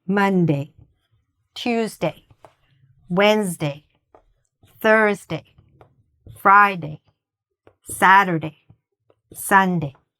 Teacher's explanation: the stress in all of these words is actually at the beginning, in the first syllable.